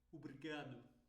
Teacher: é uma pronúncia mais rápida e fechada